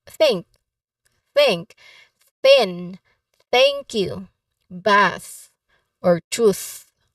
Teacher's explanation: voiceless th or unvoiced th sound · dental fricatives which means tongue between teeth